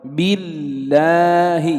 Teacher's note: لاحظ لام لفظ الجلالة سبقت بكسر فحكمها الترقيق